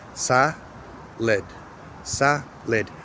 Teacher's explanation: So I'm going to pronounce that vowel correctly. But, in the non-tonic syllable, we don't say the same pronunciation of the a.